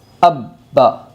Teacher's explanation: تشدید والے حرف کو 2 مرتبہ پڑھے گے۔ پہلی مرتبہ پچھلے والے حرف سے ملا کر پڑھے گے اور دوسری مرتبہ خود سے۔ اب با۔ ناظرین، ہم نے پڑھا پہلا با کے اوپر تشدید ہے، لیکن با سے پہلا جو حرف ہے وہ حمزہ ہے، تو ہم نے با کو حمزہ سے ملا، لیکن الٹا نہیں سیدھا ملا، حمزہ با زبر اب۔